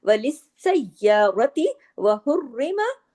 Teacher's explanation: ता जो है गोल ता, ये जो ता मरबूता है, अगर हम इस पे रुकते हैं, आरजी सुकून करते हैं, तो ये हा में बदल जाती है, लिस्सय्यारा हो जाएगा। लेकिन अगर मिला के पढ़ते हैं वसल की सूरत में तो ये ता ही रहेगा · हुर्रे रा बारीक पढ़ा जाएगा, रा के नीचे जेर है